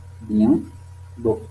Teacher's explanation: occlusives, bilabiales, sonores, les cordes vocales vibrent, orales